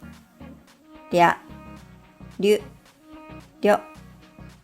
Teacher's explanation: the Japanese り is different from the English R sound. It's something between R and L.